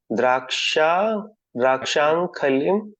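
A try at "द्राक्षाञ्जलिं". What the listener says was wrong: खलीम नहीं, अंजलिम वा, अंजलि है वो।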